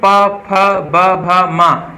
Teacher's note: ये ओष्ठ मतलब ओठ से होते हैं, इसको ओष्ठ कहा जाता है, ठीक है।